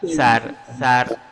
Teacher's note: Ujung lidah berada di antara dua gigi